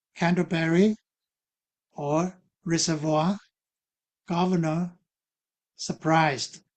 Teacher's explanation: In English, dissimulation is common with liquid consonants like R and L as seen in words like Canderberry or reservoir, governor, surprised where one of the R sounds is dropped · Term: dissimilation